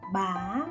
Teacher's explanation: Dấu sắc, high rising